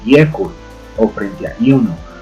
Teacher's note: esa I nos tiende un poco hacia el sonido de la Y